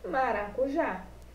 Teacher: Então, turminha, na palavrinha maracujá, a sílaba pronunciada com mais força é o já, que é a última sílaba, logo é uma oxítona.